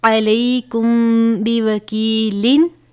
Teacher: میم ساکن کے بعد حرف با آیا ہے تو یہاں پر اخفاء شفوی ہو رہا ہے